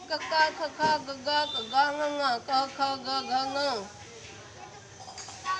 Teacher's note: घ किसका शब्द है, किस वर्ग में आता है, घ कवर्ग में। ये कवर्ग किस लिए कहलाता है, क्योंकि ये सारे शब्द कंठ से आते हैं।